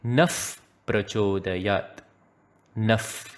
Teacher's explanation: Number two, in Dhiyo yo Naha Prachodayat, since the Visarga is followed by a p sound in prachodayat, we give an uf sound. This is referred to as the upatmaniya.